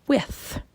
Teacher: Now, typically when we say TH, we're thinking of when you quietly stick your tongue out and go, and that is an unvoiced TH. So there's no voice to it. There's no vocal cords vibrating, and we make the sound like in with.